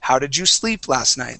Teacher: you're you you're not going to uh uh emphasize last night you want to emphasize sleep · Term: emphasis